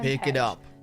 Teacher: the stress syllable starts lower rather than higher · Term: intonation and pitch